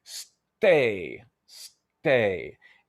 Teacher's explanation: So, you know, one of the distinctions between say and stay is that there's a little tiny part of stay where there's no vocal tract resonance or there's no noise coming out. So there is essentially a little bit of silence.